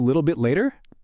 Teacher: En la palabra bit, la T prácticamente no está. En su lugar hay como un pequeño corte en la garganta. A eso se le conoce como la T glotal.